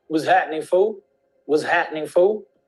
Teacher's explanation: the L is not really pronounced at the end